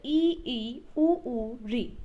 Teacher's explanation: संवत् स्वर होता है जिनके उच्चारण में सबसे कम मुख खुलता है, लगभग बंद ही रहता है